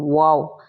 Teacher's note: होठों को गोल करने से वाव की अदायगी होती है